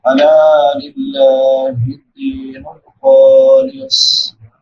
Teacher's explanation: صاد بھی موٹے حروف میں سے ہے موٹا کر کے پڑھیں گے اور سیٹی والے حروف میں سے بھی ہے سیٹی کے ساتھ بھی ادا کریں گے. · لام کے بعد الف مدہ ہے الف سے پہلے زبر ہے الف برابر لمبا. لفظ اللہ سے پہلے زیر ہے لفظ اللہ باریک ہوگا.